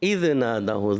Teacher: دال کو ہلانا نہیں ہوتا، دال حرف قلقلہ میں سے نہیں